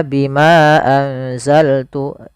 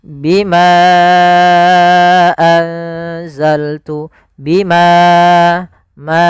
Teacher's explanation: untuk mad jaiz munfasil sendiri kita panjangkan empat harakat